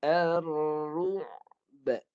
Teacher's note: Ain pun mati. Ru'b. Ba mati dengan qalqalah.